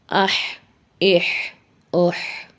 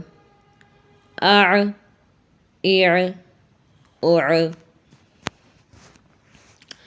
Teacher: گلے کا درمیانی حصہ، وہاں سے ادا ہوتے ہیں عین، ح۔ گلے کو ذرا سا رب کرنا پڑتا ہے، پش کرتے ہیں آواز کو تھوڑا سا، تو پھر یہ ہمارے وہاں سے دونوں لیٹر ادا ہوتے ہیں۔ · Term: وسط الحلق